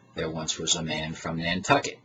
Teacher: the a-lines consist of a meter as follows an iambic foot followed by two anapastic foots followed by an extra beat